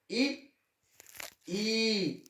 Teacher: मुंह थोड़ा सा फ्लैट होता है और जीवा जो हमारी है वो हल्की सी टच करती है हमारे ऊपर तालू की तरफ।